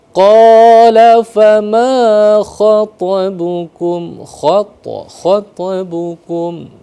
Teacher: maka disebut dengan qalqalah sugro, kecil, mantul sedikit tapi sambil jalan, tidak perlu sampai berhenti.